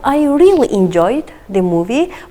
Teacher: By stressing really, we emphasize our enjoyment here. If we just say I really enjoyed the movie without stress, it is less emphatic.